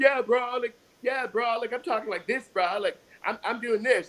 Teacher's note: you're trying to like lower your voice, but you're frying your vocal cords because you don't speak that low